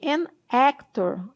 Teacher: A palavra actor tem um som bem aberto de E.